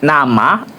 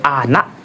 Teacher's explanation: Lalu yang ketiga ada vokal N yaitu nasal alveolar bersuara